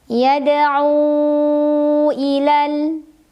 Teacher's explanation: Mad tabi'inya adalah waw sukun sebelumnya dhammah pada kata yada'u, hamzahnya yang i pada kata ila. Maka cara membacanya dipanjangkan ainnya boleh 4, boleh 5 harokat. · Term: mad jaiz munfasil